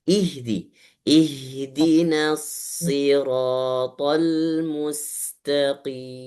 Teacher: harokat kasrohnya kurang sempurna. Jangan imalah di.